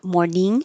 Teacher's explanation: morning is the ing in the back of the throat so it touches up high